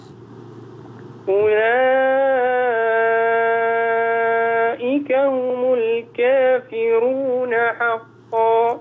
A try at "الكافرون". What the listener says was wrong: بس أظهر الترقيق للراء الكافرون.